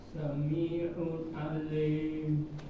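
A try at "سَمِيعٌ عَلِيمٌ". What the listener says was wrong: Ya, lim ya. Pak, jangan ditebelin ya. Sami'un ali, jangan ali.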